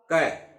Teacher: क का उच्चारण करते हैं तो प्राण वायु जो है, हवा जो है, वायु जो है वो कम मात्रा में निकलती है। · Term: अल्प प्राण